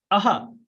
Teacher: विसर्ग जो ध्वनि है वो कंठ से निकलती है। कंठ से संबंधित है।